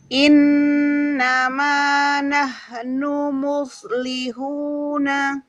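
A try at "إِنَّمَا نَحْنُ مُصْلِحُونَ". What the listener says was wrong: Hak sukun tidak memantul, Bun. Ulang.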